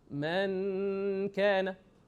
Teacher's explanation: So the noon, 50% comes from the nose, and 50% comes from the tongue.